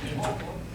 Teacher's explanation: Anytime we have the word omo, it looks like homo, but we don't pronounce the H. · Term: H, always silent